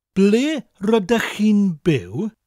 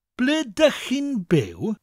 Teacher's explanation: I'm from South Wales, so I naturally asked the South Walian dialect version of the question, which is, ble rydych chi'n byw? Now we tend to drop the R-Y, the R sound, from rydych.